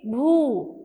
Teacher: So Bha plus U we say Bhu, which has a longer sound